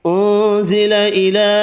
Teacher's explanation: نون کا اخفا ہوگا، چھوٹی مد 3 الف کی مقدار میں کھینچ کر پڑھیں گے